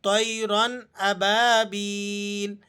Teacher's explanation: طَيْرًا را موٹی پڑھی جائے گی اور را کے بعد جو الف ہے یہ نہیں پڑھا جائے گا۔